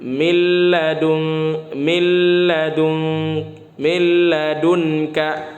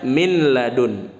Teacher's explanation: Nun nya tidak dibaca tapi lemnya dibaca double ya jadi tasydid lamnya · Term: idgam bilagunnah